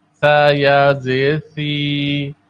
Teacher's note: سا کی ادائیگی میں زبان کی نوک ثنایا اولیاء کے کنارے پر لگتی ہے. سا نرمی والے حروف میں سے ہے.